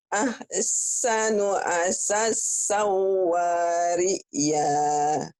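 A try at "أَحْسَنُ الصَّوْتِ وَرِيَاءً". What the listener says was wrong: Saunya pendek. Sau gitu Bu. Nggak ada yang panjang. Sanya panjang di sini. Sau. Saya panjang yang pertama. Yang kedua pendek ya lagi Bu. Ahsanu asasawari ya.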